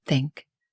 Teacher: For the TH sound in think, your tongue should stick out slightly between your teeth